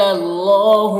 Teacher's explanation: اللہ مشدد حرف ہے تو پیچھے والے متحرک حرف لام سے مل کر پڑھا جائے گا اور اللہ کے لام کو پر پڑھیں گے، کھڑا زبر ہے 1 الف کے برابر کھینچیں گے۔